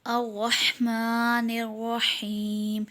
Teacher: اب اس میں را پر زبر ہوگا، را کو پور پڑھیں گے. میم پر کھڑا زبر ہے، اسے ایک الف کے برابر کھینچ کر پڑھیں گے.